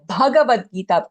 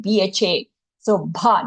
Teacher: when we say the Bhagavad Gita, give that bha, more prana, right? BHA. So bha, not Bhagavad, Bhagavad Gita.